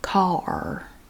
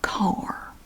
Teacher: We just drag out the ah a little bit. So we try to make it 2 syllables, but we don't quite make it.